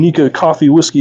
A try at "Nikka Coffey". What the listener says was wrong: So it's actually, it doesn't have coffee in it. It's pronounced Coffey. Yeah, it's actually the name of the distiller.